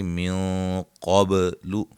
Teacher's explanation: نون ساکن کا موٹا اخفا، قاف کو موٹا